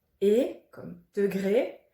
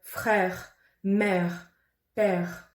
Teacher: Vous ouvrez plus la bouche pour prononcer le son est. Donc quand vous avez un accent aigu, c'est fermé, et comme degré. Si vous avez un accent grave, c'est plus ouvert, comme dans les mots frère, mère, père.